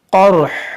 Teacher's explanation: रा तो साकिन है ही है, हा को भी साकिन कर देंगे